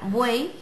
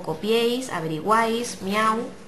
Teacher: Bueno, los triptongos, que sería una clase diferente, es porque es la unión de tres vocales en una sola sílaba, la pronunciamos juntas porque siempre son vocal cerrada, vocal abierta y vocal cerrada, ¿vale?